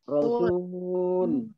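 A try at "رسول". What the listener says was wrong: S-nya tekan. Baik, jadi supaya enak didengar, maka yang mad diteken, ya, tidak boleh datar.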